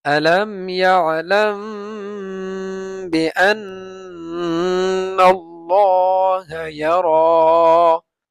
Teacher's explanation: মিম সাকিনের পরে বা আসলে গুন্না হবে